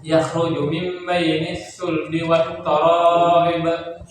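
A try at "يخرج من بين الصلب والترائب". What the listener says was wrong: Jangan toro. Wat taro tanya tipis. Kemudian taruhnya tanya tipiskan rohnya tebal.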